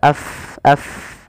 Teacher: huruf Fa itu makhjnya di bibir tapi tidak rapat bibir kita